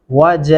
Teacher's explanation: جیم کے ساتھ 4 الفی مدہ ہے